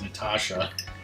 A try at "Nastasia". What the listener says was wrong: Yeah, it's like Nastasha. Like there's an extra S. Nastasia? Nastasia?